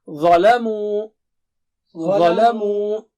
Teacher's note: Dha is very thick and high, but mu is thin.